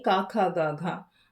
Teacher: ठीक है, आवाज जो है वो गले से निकलती है ना, निकल रही है, इसीलिए इन्हें क्या कहेंगे, कंठ वर्ण कहेंगे। अब आप गले में हाथ रखें और फिर बोलें का ख ग घ, आपको महसूस होगा कि गले से आवाज निकल रही है।